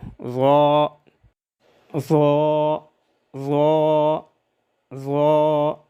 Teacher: زبان کی نوک جب ثنائے علیہ کے درمیان اور جڑ والے کناروں سے لگ جائے تو اس سے ظا ذال اور ثا ادا ہوتے ہیں · ظا صفت استعلاء اور اطباق کی وجہ سے خوب پر ادا ہو۔ ظا کی ادائیگی میں ہونٹ گول نہ ہو۔ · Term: 13واں مخرج